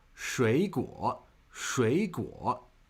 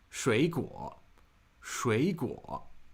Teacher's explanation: when two third tones are consecutive in a pair, the first of the two is pronounced as a second tone.